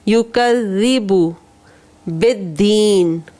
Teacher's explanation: ذال بہت ہی نرمی سے پڑھنا ہے, زا کی ساؤنڈ نہیں, بزنگ ساؤنڈ نہیں آنی چاہیے